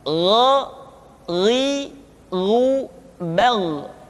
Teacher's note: Diucapkan seperti kita mengucapkan huruf Kha, yaitu diucapkan dari pangkal tenggorokan kita. Yang membedakannya adalah Kha mengalir nafas dan Gha tidak mengalir nafas. Dan keduanya memiliki persamaan, yaitu memiliki sifat al-isti'la.